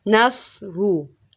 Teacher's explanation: اسی طرح را کے اوپر پیش ہو، جیسے نصرو، اب یہ موٹی ہو گئی